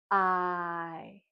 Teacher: when we make that sound, our mouth is open and smiling, and our tongue is towards the front of our mouth